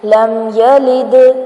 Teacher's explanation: last میں جو دال ساکن ہے اس کو ہلائیں گے، اس کو کہتے ہیں قلقلہ کرنا